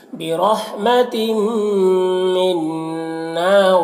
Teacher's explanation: تنوین کے بعد میم حروف یومن میں سے تو ادغام ناقص ہوگا، نون مشدد غنہ ہوگا